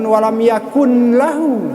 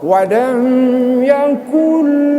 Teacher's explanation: nunnya jangan dibacakan, kita sembunyikan, tapi kaf langsung kepada lam. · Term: idgham